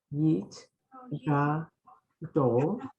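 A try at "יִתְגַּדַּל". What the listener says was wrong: that's under the dalid. So now there are those who used to pronounce this with more of a O than a, but that's not how we're going to pronounce it. So we're going to do it Yit Gadal, V'yit Kadash, Shemay Rabbah.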